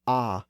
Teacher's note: This sound is the lowest vowel we've looked at so far. Technically speaking, it isn't really a front vowel. It's more of a low central vowel. And as I've noted before, there are actually a few different versions of the low ah sound. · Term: cardinal vowel number 4